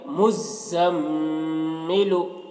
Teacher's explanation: مزمل، میم زا پیش مز، زا میم زبر زم، مزم، میم زیر می، مزمی، لام پیش لو، مزملو۔ میم مشدد ہے تو میم میں غنہ کے ساتھ میں پڑھیں گے